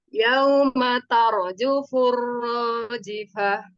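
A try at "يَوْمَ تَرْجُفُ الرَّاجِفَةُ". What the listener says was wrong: Ya, jufur, jifah. Kuatkan lagi jimnya.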